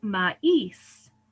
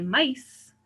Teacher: like ma is right we don't say mice right so that we have to put the accent on the i to be sure that the speaker knows that we're separating those into two syllables